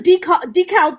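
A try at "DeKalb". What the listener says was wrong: Decab, Yeah, so the L is silent. It's like the H at the end of shake.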